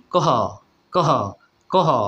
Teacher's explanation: প্রাণ বেশি দিতে হবে, বাতাস বেশি দিতে হবে, তাহলে বন্ধুরা মহাপ্রাণ হয়ে যাবে।